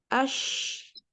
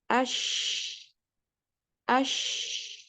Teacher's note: Satu-satunya huruf yang menyebar. Nafasnya tersebar. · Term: tafashi